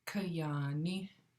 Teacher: you have a nice long low ah that double A with no accent